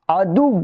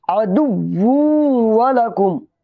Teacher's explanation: واو کو پھر واو سے ملا دیں گے، دال واو دو پیش دو، واو واو پیش وو، اس واو کو اس سے ملا دیں گے، ادغام کے ساتھ بولیں گے۔